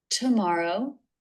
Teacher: Teeth closed for the T and lips together for the M. O as in no diff thong.